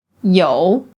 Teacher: a simple low falling tone, or a full third tone